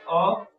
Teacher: अ जीव के मध्य भाग में आता है